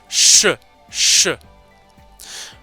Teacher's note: une fricative sourde mais palatale qui se prononce au niveau du palais